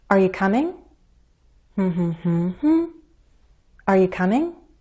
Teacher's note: there's a bit of a drop before we rise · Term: rising intonation